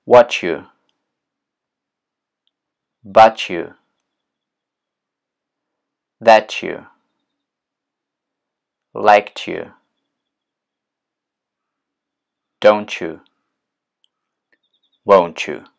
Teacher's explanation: местоимение you to произносится это все через звук ч то есть вы не произносите звук ц а вы произносите вместо этого звук че